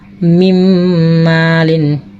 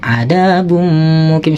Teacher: Jadi memasukkan suara nun mati tadi ke mim dan disertai dengan dengung